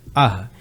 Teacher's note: विसर्ग अः ये भी कंठ से बोला जाता है